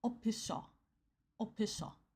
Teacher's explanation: the letter F becomes a P because there's no F in Korean